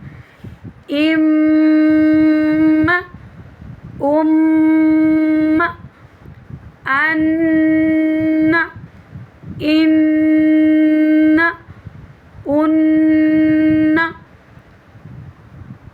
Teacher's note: جیسے اگر اس کے اوپر شد ہے، میم کے اوپر پیچھے والے ورڈ سے ملا کر، یعنی یہ جو شد والا ہے اس کو 2 کے برابر پڑھا جاتا ہے نا، 2 حروف کے برابر، تو اس ایک الف کے مقدار کے برابر ناک میں آواز کو گنگنی کی طرح پیدا کرنا ہے۔ جیسے حمزہ زبر میم، ام میم زبر ما، ام، یہ جو ام، یہ ناک میں آواز کو ٹھہرانا ہے۔